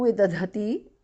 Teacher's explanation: Vidadhati, the second dhas, mahapranah.